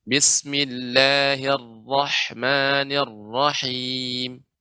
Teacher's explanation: ra-nya dibaca tebal, tapi jangan sampai memonyongkan. Nirrahmanirrah dengan memonyongkan kurang tepat. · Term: ra tafkhim